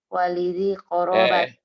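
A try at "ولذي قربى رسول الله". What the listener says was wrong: Dulu. Jangan ditanwinin. Ini kan mudhaf. Walidhi qorobati Rasulillahi.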